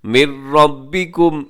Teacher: نون کی آواز اس میں آپ نے بالکل ڈالنی نہیں ہے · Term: ادغام